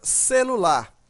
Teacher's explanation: Então, nós temos aqui um exemplo, a palavra celular. Então, observa que a sílaba mais forte desta palavra é a sílaba lar. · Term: sílaba tônica